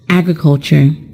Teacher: The word agriculture is a noun, and it is stressed on the first syllable.